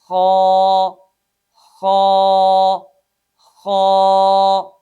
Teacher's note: Number 1 اقصائے حلق، یہ اقصائے حلق ہے، اور اس سے اوپر وسط حلق ہے یعنی حلق کا درمیان، اور اس سے اوپر ادنائے حلق ہے۔ خا ادنائے حلق سے ادا ہوتا ہے